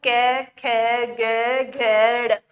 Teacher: जब हम क वर्ग को उच्चारित करते हैं तो हमारे कंठ से आवाज निकलती है कंठ पर हमारे प्रेशर होता है